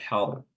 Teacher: Hardin di sini ra-nya dibaca tebal har, ya.